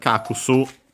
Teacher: the u in ku, should be barely heard if at all